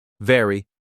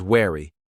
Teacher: The V sound is made by putting your top teeth on your bottom lip and vibrating. The W sound is made by rounding your lips like you're about to whistle.